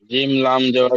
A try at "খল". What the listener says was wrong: জিম নয়, খ লাম জাবার খল।